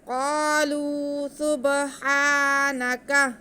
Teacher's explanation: قاف جو ہے حروف مستعلیہ میں سے، تو ہم قاف کو موٹا کر کے پڑھیں گے، پھر کاف پر زبر ہے اور اس کے ساتھ الف ہے، تو ہم الف سے پہلے زبر ہو تو الف مدہ ہوتا ہے، ہم قاف کی آواز کو الف کے برابر کھینچ کے پڑھیں گے کیونکہ یہ قاف کے ساتھ الف مدہ ہے۔